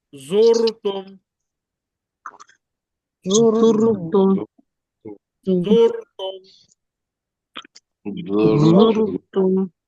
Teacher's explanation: when Ra Sakina preceded by Dhamma, in this case, Ra will be pronounced as thick.